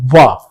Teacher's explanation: व का जब उच्चारण आप करेंगे तो जीभ दांतों से स्पर्श करती है और होठ भी सक्रिय होते हैं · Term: दंत्योष्